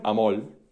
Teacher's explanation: hay un caso de neutralización en un contexto específico que es al final de palabra donde tú tienes amor, pero algunas personas neutralizan y dicen amol. Eh, porque se neutralizan ciertos elementos que diferencian a la L y a la R. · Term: lambdacismo